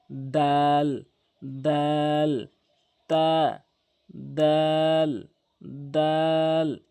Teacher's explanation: জিহ্বার আগাটি নিয়ে সামনে দুইটি দাঁতের গোড়াতে লাগাবেন · তা দাল একই উচ্চারণ, অবশ্যই মনে রাখবেন। তাহলে কি, জিব্বার আগাটি নিয়ে সামনে 2টি দাঁতের গোড়াতে লাগাবেন।